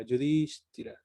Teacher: Entonces está la S, está la T, está la H, Yudhishthira. Entonces la I ahí se pronuncia un poco más larga